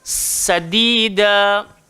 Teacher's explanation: So takut tadi nanti dia macam sa, bukan sadida, sa. Dan sifat sin ni disofir kan. Sin ni maksudnya dia kena desir.